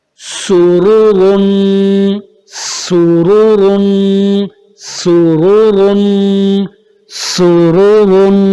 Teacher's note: را دو پیش رن، سرورن، سرورن. سین کو باریک رکھنا ہے، لیکن ہونٹ گول تینوں پر ہوں گے کیونکہ پیش پڑھ لیں ہم · را بھی موٹا، یہ را بھی موٹا، دونوں را موٹے ہوں گے کیونکہ دونوں پر ضمہ ہے، اور ایک دوسری را پر ضمتین، یعنی دونوں پر پیش ہے اور دوسرے پر تنوین ہے، اس وجہ سے یہ دونوں را موٹے ہوں گے. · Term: را موٹا